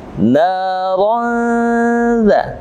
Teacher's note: Fathatain ini bertemu dengan huruf dzal, maka dibaca ikhfa haqiqi. Naran dza dibaca samar seakan-akan kita sudah mau masuk kepada huruf dzal